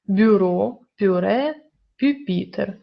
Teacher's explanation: вимовляють це м'яко як слова бюро пюре пюпітер тут у наші губні приголосні напівпом'якшені тому апостроф Нам не потрібен